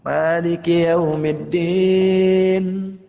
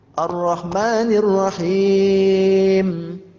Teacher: Kalau keluarnya nun itu iftitah, terbuka, sedangkan mim tertutup.